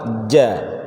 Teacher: tempatnya ada di tengah lidah ketemu sama langit-langit